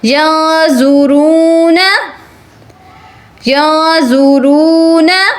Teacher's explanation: یا زبر نون یا, یا زبر نون یا, نون کو ہم نے ناک میں چھپا لینا ہے